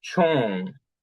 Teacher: the high tone or the floating high tone appears